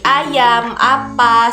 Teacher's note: Nah, kemudian A itu terletak di rendah bawah depan.